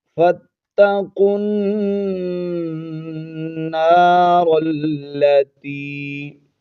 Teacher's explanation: یا کو ایک الف کی مقدار کھینچ کے پڑھنا ہے، حرف مدہ ہے۔